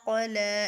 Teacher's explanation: اس قاف کو موٹا کریں گے کیونکہ یہ حروف مستعلیہ میں سے ہے